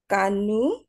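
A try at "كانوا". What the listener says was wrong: কাতে একটু টান হবে, আলিফ আছে।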